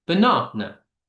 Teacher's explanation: things like banana, the stressed syllables in the middle